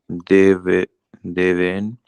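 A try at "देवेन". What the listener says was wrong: Devena Unlike Hindi, you pronounce the whole last letter. Okay, maybe in Hindi, Deven, right? This will become Deven, but here we have to pronounce that whole letter, Devena. Okay, that is the main difference.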